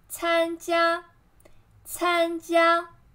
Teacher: 参, flat tone. 加, flat tone.